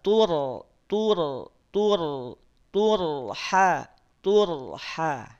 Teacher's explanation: kalau ini ronya yang sukun h-nya yang berharakat RO di sini tetap tebal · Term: ro sukun, Ro sukun